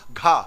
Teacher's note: और जैसे ही घा बोला तो फिर हवा निकली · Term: महाप्राण